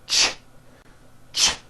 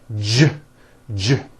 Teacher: See that? Now, if you take this CH sound and you keep everything in your mouth the same, you just add voicing, it becomes an American J sound, j, j. CH, ch, unvoiced, J voiced, j, ch, j.